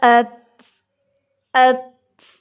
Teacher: for example حمزہ زبر تا ات، ات، ہلکی سی آواز آتی ہے ہمس کی، اور اتنی یہ لائٹ ہوتی ہے کہ جو پڑھنے والا ہوتا ہے صرف اس تک آتی ہے